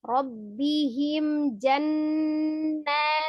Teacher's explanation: Ada nun tasdid, digunnahkan kembali, kemudian na dibaca 2 harakat, ada alif kecilnya.